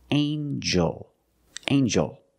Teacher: In this word, the G makes a J-J sound, like jump and juice. Together with the N, a regular N sound, not the nasal ng, but the regular N.